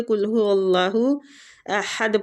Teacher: ایک تو قاف کے مخرج کو دیکھنا ہے، دوسرا احد جو ہے نا، یہ ہا جو وسط الحلق، مطلب کہ حلق کے درمیان والے حصے سے ادا ہوتا ہے